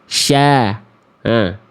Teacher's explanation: kalau huruf shin makhrajnya itu keluar dari tengah lidah yang diarahkan ke langit-langit